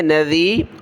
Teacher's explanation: ذال پر زبان نکالیں گے